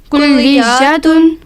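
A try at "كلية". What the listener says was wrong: کلیات نہیں ہے، کلیت، ہاں، کلیت کالج، جامعۃ یونیورسٹی۔ بستان کسے کہتے ہیں؟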